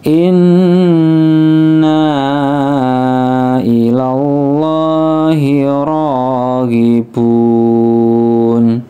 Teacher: Nun tasdid ghunah atau dengung ditahan tiga ketukan ya Inna nnya panjang Mad Jais munfasil ada tanda bendera di atasnya